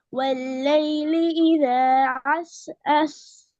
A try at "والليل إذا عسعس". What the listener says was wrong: ஆயின் வரணும்.